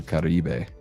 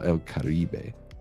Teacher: The accent would be, because El Caribe, so unless the accent is placed elsewhere, you can automatically assume in Spanish that the accent of the word, the emphasis is going to be on the vowel on the second to last syllable, which in El Caribe is the I, or they say E in Spanish.